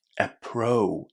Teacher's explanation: connect the O and U together and say O, just as in go or no.